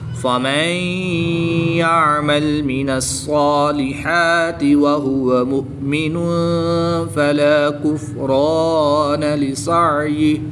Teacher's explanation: یہاں پر دو پیش کی تنوین کے بعد فا حروف اخفا میں سے ہے، یہاں پر اخفا ہوگا یعنی غنہ زمانی کر کے پڑھیں گے